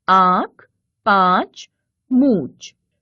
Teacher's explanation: मुख व नाक दोनों से उच्चरित होने वाले वर्ण अनुनासिक स्वर कहलाते हैं